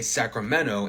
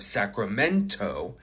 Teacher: this is a post-nasal T deletion that's pretty common, especially with things that you say frequently.